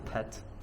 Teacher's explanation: aspiration, so that's this short burst of air when you say a word like pet